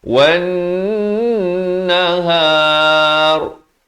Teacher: Jangan baca wan nahar, itu tak betul. Mestilah 2 harakat dengung barulah nahar